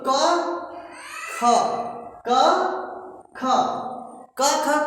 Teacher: क ख, क ख कहने से झंझनाहट नहीं आती है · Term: अघोष